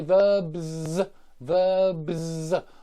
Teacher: B is voiced, so I need to give it a Z and not a S. So this is for verbs, verbs and nouns, nouns.